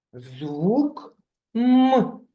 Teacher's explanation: приголосний а саме твердий тому ми його позначаємо рисочкою